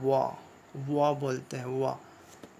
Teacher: अब दांत और ओठ दोनों को मिलाकर हम लोग बोलते हैं व